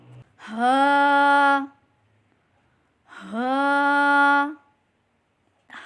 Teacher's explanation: حلق سے نیچے والے حصے سے ادا کریں. ہا حمزہ حمزہ حلق کے نیچے والے حصے سے ادا کریں.